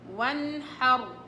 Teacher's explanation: النون هنا وراها حاء يعني إظهار · وانحر أخرج اللي بيقول لي انه الخاء فيش فيها احتكاك والحاء ما فيش فيها احتكاك، اقول له معلش سامحني، الحقيقة فيها احتكاك، ولكن احتكاك صوتي هواء وليس احتكاك مخرج